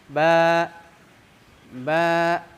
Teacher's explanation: fathah yaitu di dibuka secara sedang bukanya tidak terlalu mukka tidak juga nutup sedang-sedang saja